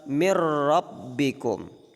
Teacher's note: sembunyikanlah sifat takrirnya pada huruf ra ketika ia ditasydidkan · Jadi dimaksud karrironnah ini artinya melebur ke huruf tanpa mendengung. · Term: idgham bila gunnah